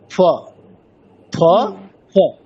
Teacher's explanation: পুরোপুরি ওষ্ঠ দুটো একেবারে অতটা প্রেস না করে ফ ফ ফ, মানে হালকা টাচ। আপনি যেটা মানে পূর্ণ ফ প ফ যখন বলছেন একেবারে দুটো ওষ্ঠ পুরোপুরি একেবারে একসাথে হয়ে যাচ্ছে এবং সেটা অলরেডি বুঝতে পারছেন যেটা প্রেস করছে, তাহলে ওইভাবে প্রেসার দেওয়া যাবে না। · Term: অর্ধেক ফ